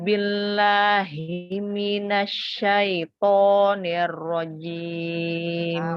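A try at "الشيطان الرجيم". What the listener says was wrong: Masih ya, nanti dilatih ya karena sudah terbiasa ya. To-nya dibantu dengan memonyongkan bibir. Padahal to itu bukan huruf bibir, bukan huruf asyafatain. Jadi syaiton, syaiton. Buka aja, jangan monyong. Syaiton. Syaiton. Buka tapi jangan monyong. Syaiton. Rojim ya. Nah, jadi apa yang bukan huruf bibir, bibir jangan monyong.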